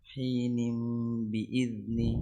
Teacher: نون تنوين بالكسر منقلب لميم مخفى عند الباء المكسورة بغن حركتين